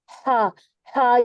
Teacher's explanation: ہا یہ وسط الحلق والی ہا ہے، اس کو باریک رکھتے ہوئے ہم نے یہاں پر الف مد کے ساتھ پڑھنا ہے. تو یہاں پر ہم اس کے 2 کاؤنٹ پڑھیں گے.